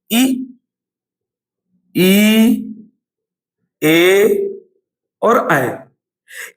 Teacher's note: इ इ ए और ऐ ये चार स्वर जीभ के आगे वाले हिस्से से निकलते हैं। इनको बोलते समय जीभ के आगे वाले हिस्से पर जोर पड़ता है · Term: अग्र स्वर